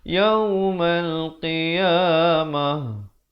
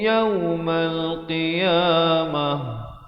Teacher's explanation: Nama tuwaffawna ujurakum izhar syafawi, bunyi saja kum, terus yaumal qiyamah, ta marbutah bila diwaqafkan ditukarkan kepada bunyi ha